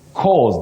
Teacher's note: you say cause with a voiced sound, Z.